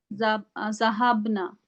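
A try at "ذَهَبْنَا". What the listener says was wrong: जहाबना, नून को लंबा नहीं करना, जहाबना, बहुत शॉर्ट रखना है इसको, वरना सुनने में ऐसा आएगा जैसे आपने ये वाला सीगा बोल दिया।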